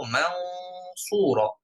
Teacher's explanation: কেন? কারণ সদ হরফটা মোটা হরফ, এই জন্য এই গুন্নাটাও মোটা হয়ে যাচ্ছে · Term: ইখফা